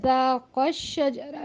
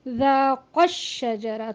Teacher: نبر کے ذریعے سے ان 2 الفاظ کو جوڑا جائے گا. جیسے ذاق الشجرہ نہیں بلکہ ذاق الشجرہ، تھوڑا سا اپنی آواز کو بلند کر کے